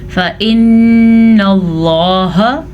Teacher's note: نون یا میم پہ شد آئے تو غنہ لازمی ہے, آپ کو معلوم ہوگا. اور لفظ اللہ کو پر پڑھیں گے کیونکہ لفظ اللہ سے پیچھے زبر ہے